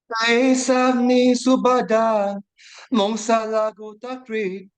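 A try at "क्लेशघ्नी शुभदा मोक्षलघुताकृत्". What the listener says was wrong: You should not go like that. Kleshagni Shubhada Moksha. Because it's an Anushtup Chanda. You should stop after 8 syllables. Kleshagni Shubhada Moksha. Laghuta Krits.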